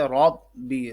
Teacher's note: را زبر با رب، ٹھیک ہے، را زبر با رب، با زیر بی، رب بی، رب بی، تشدید کی وجہ سے رب بی، تھوڑا سا رک کے پڑھ رہے ہیں، ٹھیک ہے، اور را کو موٹا پڑھنا ہے کیونکہ را کے اوپر زبر ہے۔